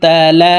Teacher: চিকন চিহ্ন বামে হামজা মধ্যে মুনফাসিল তিন আলিফ টানিয়া পড়িতে হয় তো আমরা এই লামকে তিন আলিফ টেনে পড়বো